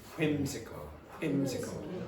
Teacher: some people in English pronounce this WH like there's more aspiration